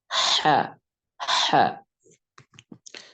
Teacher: huruf ha diucapkan dengan lembut tidak menekan kemudian udara dialirkan dari paru-paru melewati daerah artikulasi tanpa bergetar suara